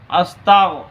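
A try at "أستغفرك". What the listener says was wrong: আর একটু মোটা তাপকিন করতে হবে। তাগো না, আস্তাউ। তুমি তাটাকে পাতলা করতেছো না, তা পাতলা হরফ। আস্তাউ।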